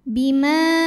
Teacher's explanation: sebelumnya fathah pada kata Bima hamzahnya yang a pada kata aroka maka mim dipanjangkan boleh empat boleh lima harakat · huruf ra dibunyikan secara tafkhim karena ra-nya berbaris fathah, maka cara bacanya ditebalkan, pangkal lidah naikkan. Ara, ra mad tabi'i muqaddar, karena ada baris fathah tegak di atas huruf ra, maka cara bacanya dipanjangkan 2 harokat. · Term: Mad Jaiz munfasil